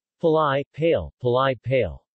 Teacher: One change that occurred much more than in the modern dialects was that of ai monophthongisation to e.